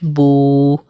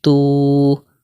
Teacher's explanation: واو مدہ کو ہمیشہ ہم 1 الف کے مقدار کھینچ کر پڑھتے ہیں.